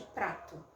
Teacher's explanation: O meu articulador ativo, que é a minha língua, dá um tapa no céu da boca e produz o som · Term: TEP